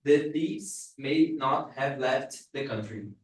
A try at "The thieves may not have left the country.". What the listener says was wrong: you are still reading separ we're separating the words connect them